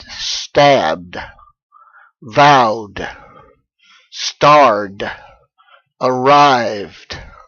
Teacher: You simply pronounce the ending itself as duh, as a voiced consonant.